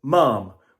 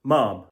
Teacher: this word could be pronounced ma'am, with that long R vowel sound